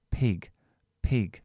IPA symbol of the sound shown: ɪ